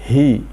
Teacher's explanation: Huruf H itu huruf halaq, sangat mudah mengucapkan. Asal kita membuka mulut, kemudian kita bunyikan, maka jadilah suara H ada di pangkal halaqah, pangkal tenggorokan. Ha, kalau di kasroh menjadi hi.